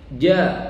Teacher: Karena huruf jim itu tidak boleh hamas, tidak boleh ada nafas keluar, sifat hurufnya jahar. Jadi harus sempurna ja, nggak boleh ja.